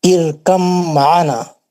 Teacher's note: हुर्फ बा साकिन का हर्फ मीम मुशद्दद में इदगाम मुतजानिसैन हो गया।